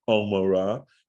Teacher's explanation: the way an ayin is pronounced is down in the throat